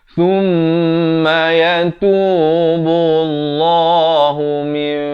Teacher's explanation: Bunyi nun itu daripada min jadi ditukarkan kepada bunyi mim. Mim, tapi jangan lupa panjangkan 2 harakat. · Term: hukum iqlab